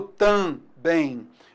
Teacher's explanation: Esse M serve apenas para nasalizar